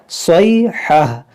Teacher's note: जब रुकेंगे तो इसको हा साकिना बना देंगे। गोलता पर जब भी आप वक्फ करें तो उसे हा साकिना से बदल दें।